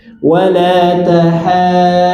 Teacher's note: Jadi haknya tipiskan, jangan terbawa huruf dhad jadi tebal.